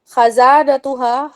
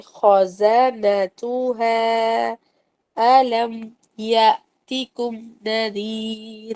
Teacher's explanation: خزنتها، خزانتها ہرگز نہیں ہے، یہ خزانہ نہیں ہے لفظ. خا کو موٹا کرنا ہے ہونٹوں کو گول کر کے